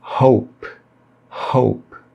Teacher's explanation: É muito comum que as pessoas errem as palavras que começam com H e acabam pronunciando com o som de R, o nosso R forte, como em carro, roupa ou rei. A pronúncia correta do H é também feita com aspiração, aí fica hope, hope.